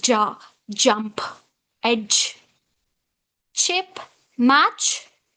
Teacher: Like da is a plosive sound. Immediately it follows with this ja sound. Ja, jump, edge, chip, match, So here plosive and this is fricative. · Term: affricate